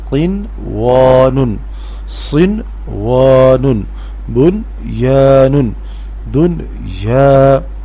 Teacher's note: چوتھی لائن کے جو 4 الفاظ ہیں، اگرچہ ان چاروں الفاظ میں نون ساکن ہے اور اس کے بعد حروف حلقی نہیں ہے، اس کے باوجود نون ساکن کی آواز میں اخفا نہیں کرنا یعنی نون کی آواز ناک میں سے نہیں آئے گی بلکہ اظہار کرنا ہے